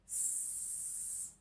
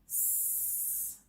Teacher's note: You'll notice that there is no vibration in your vocal cords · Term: unvoiced sound